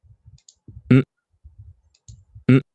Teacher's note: This is not no. This is more of nasalized.